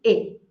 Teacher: A segunda é o I curto, é aquele som que fica entre um E e um I que não existe em português.